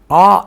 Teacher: எடுத்துக்காட்டுக்கு ஆ என்று சொல்கிற போது மேல் உதடும் கீழ் உதடும் மட்டும் இல்லாமல் வாயை நாம் முழுமையாக திறக்கிறோம்